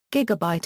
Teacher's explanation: When an Si prefix is affixed to a root word, the prefix carries the stress, while the root drops its stress but retains a full vowel in the syllable that is stressed when the root word stands alone.